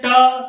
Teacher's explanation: हमारा जो जीव है ये जिह्वा उस मूर्धा भाग को टच करता है, उस मूर्धा भाग को स्पर्श करता है, उसको छूता है, इसलिए वो जो है इनको हम मूर्धन्य वर्ण कहते हैं।